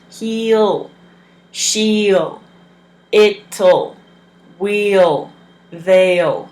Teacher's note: He will is he'll. So you're saying he and putting a ul at the end